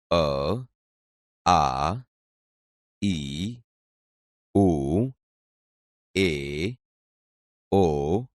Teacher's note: આ ધ્વનિ મોઢામાં અવરોધ આયા સિવાય સીધો જ સ્વર પેટીમાંથી આવતો અનુભવાય છે